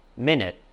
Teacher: When pronounced as minute with a short I sound and the stress is on the first syllable